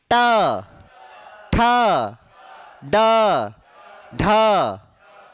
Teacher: चलो फिर से, ट ठ ड ढ, चारों में समझ में आई। जीभ ऊपर जाकर टच हुई और हल्की सी क्या हो गई, मुड़ गई, और झटके के साथ वायु क्या हो रही है, बाहर फेंकी जा रही है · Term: मूर्धा या मूर्धन्य